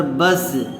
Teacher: با سین زبر بس، تو یہاں پر سین حروف قلقلہ میں سے نہیں ہے، اس لیے یہاں با جس وقت سین سے ٹچ ہو رہا ہے تو فوراً اس کی آواز الگ نہیں ہوتی ہے، بس چپکی سی رہتی ہے۔